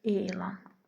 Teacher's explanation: Gördüyünüz kimi E saytını biraz daha uzadıraq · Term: səs uzanması